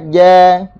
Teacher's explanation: Ar-rijal huruf jim pula kita kena sebut daripada tengah lidah. Sebab apa? Sebab makhrajnya berada di tengah lidah.